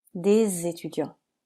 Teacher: On fait la liaison entre des et étudiant, car étudiant commence par une voyelle.